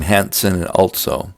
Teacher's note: the use of intrusive T in words like Hansen and also, pronouncing them Hansen and also.